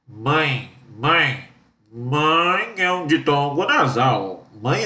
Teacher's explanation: um ditongo nasal é quando tem tio mãe mãe tem tio mãe é um ditongo nasal